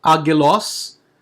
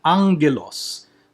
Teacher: you pronounce the first G as a Ng or a N.